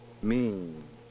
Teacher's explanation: When saying the word mean, however, the port is open throughout the entire production. Mean. It appears that the velum does not have time to close for the vowel sound before it must again open for the final nasal consonant.